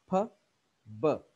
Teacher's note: ये दोनों bilabial sounds हैं। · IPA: p,b